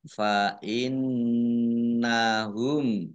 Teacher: nun tasdid dibaca hunnah atau mendengung, ditahan 2 harokat